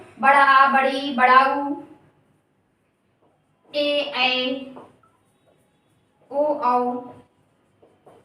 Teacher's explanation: तो ऐसे स्वर जो बड़े होते हैं यानी दीर्घ होते हैं, जिनको बोलने में ह्रस्व की अपेक्षा ज्यादा समय लगता है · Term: दीर्घ स्वर